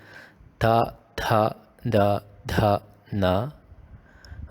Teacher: Dental sounds, where you pronounce it, your tongue is in contact with the teeth.